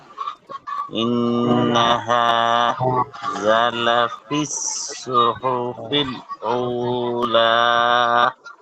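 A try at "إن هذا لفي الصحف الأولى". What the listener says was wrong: হা জালের সাথে টান হবে, মধ্যে তো ভাই। হা জালে টান হয়নি। ইন্না হাযা।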